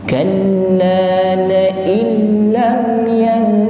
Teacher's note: Nun sukun bertemu lam, maka nun sukun tidak dibaca. Namanya idgham.